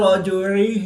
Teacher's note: جیم ساکن ہے تو یہاں پر قلقلہ صغریٰ کر کے پڑھیں گے.